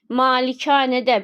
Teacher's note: malikanədə birinci və ikinci a uzanır